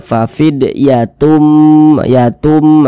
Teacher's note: Jadi bunyi tanwin ini dimasukkan ke huruf mim. Jadi dia dibaca fafid yatum, yatum, melebur dengan huruf mim.